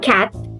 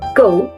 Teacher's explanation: The sound K in cat is voiceless, whereas G in go is voiced.